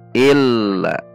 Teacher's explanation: Ada lam bertasydid, alif lam syamsiah, dibaca masuk dan ada tekanan.